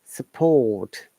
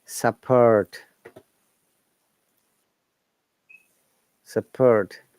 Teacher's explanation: you see no r sound but t is there this is british english